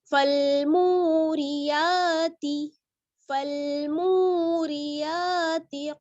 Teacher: تا کو بالکل نہیں کھینچنا ہے, جلدی پڑھنا ہے